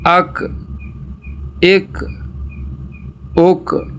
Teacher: زبان کی جڑ اور تالو کا سخت حصہ آپس میں لگے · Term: چھوٹا کاف